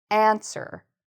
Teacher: I'm putting more stress on the first part of this.